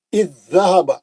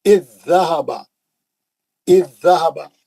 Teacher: زال ساکن کا زال مشدد میں ادغام ہو گیا، ایک زال غائب ہو گیا، ساکن زال غائب ہو گیا. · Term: ادغام متماثلین